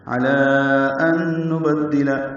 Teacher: ان میں غنہ کریں گے، نون ساکن کے بعد نون آنے کی وجہ سے